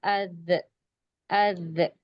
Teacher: زبان جو ہے دانتوں کی کنارے کو ٹچ ہو رہی ہے، تب ذال کا مخرج ادا ہو رہا ہے۔ زبان کی نوک اور اوپر دانتوں کا کنارہ۔